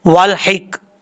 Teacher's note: ہے اس کو چھوڑ دیں گے، ہا زیر کاف حک، والحک، یہاں پہ لام کے بعد جو ہا ہے یہ ہا بریک ہے، اس کو بھاری ساؤنڈ کے ساتھ نہیں پڑھنا